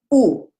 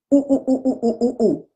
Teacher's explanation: My lips are a perfect circle. But the lips jut out a little bit from my face. It's a smaller diameter than the letter O.